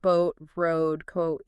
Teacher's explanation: the jaw might drop just a tiny bit at the very start for that uh and then it closes smoothly as the lips round. And the rounding itself is similar to the U2 sound, that up and around shape. · Many native speakers don't start the O sound right in the final perfectly rounded O position. Instead, they often start slightly towards the schwa position and then immediately glide up into the O as the lips round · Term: schwah start